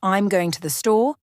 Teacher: you're emphasizing the action of going · you say it if you say I'm going to the store you're emphasizing where you're going